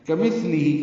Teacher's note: کاف باریک ثا باریک نرمی سے ادا ہوگا